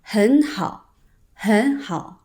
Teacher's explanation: so when two third tones are together, hěn becomes hén.